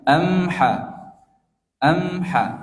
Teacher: Maka mimnya dibaca jelas dan tidak ada ghunah.